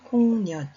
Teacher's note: 시옷 받침이 디귿으로 바뀌어서 소리가 납니다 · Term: 음절의 끝소리 규칙